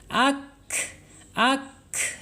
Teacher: Kap tidak mempunyai sifat qalqalah. Kemudian kap pun tidak boleh berhenti karena dia mempunyai sifat al-hams ya, al-hams itu mengalir ya. Jadi napas kita masih mengalir.